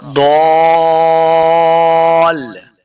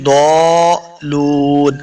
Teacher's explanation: ضاد کو لام کے ساتھ ملانا ہے